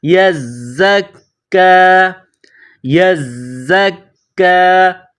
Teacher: یا زا زبر یزا، کاف زبر زک، کاف کڑا زبر کا۔ کاف کے اوپر کڑا زبر ہے، ایک الف کے برابر کھینچ کر پڑھیں گے۔